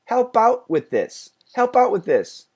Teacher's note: the th's by the way go together we only keep the second th